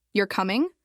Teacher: If your voice rises at the end, you're coming. It's a question. You're not sure if the person is coming or not.